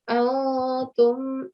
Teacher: You should put some time on the noon, so elongate that sound of the noon for just up to 2 seconds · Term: noon sakin